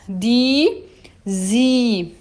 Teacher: Quando eu encontro IE, tá? IE, eu vou dizer I, um I longo.